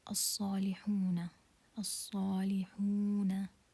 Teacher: So this waw is waw maddiya, a mad letter. So this is mad طبيعي and we are going to prolong it for 2 counts.